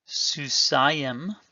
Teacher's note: notice that the accent is over the AH vowel